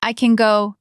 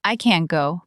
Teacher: Can is often shorter and more relaxed. I can go. Can't has a little more tension and the air stop. I can't go.